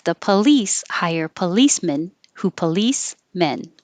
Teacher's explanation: you have to take a tiny break between the last police and men to make sure that it sounds like two separate words instead of the compound word policeman so it's a tiny little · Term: tiny little pause